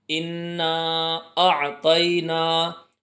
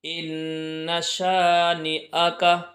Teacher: starting میں جو ان آیا تھا اس کو کھینچ کر کے پڑھنا ہے، اور یہ آخر میں جو ان آ رہا ہے اس کو جلدی پڑھنا ہے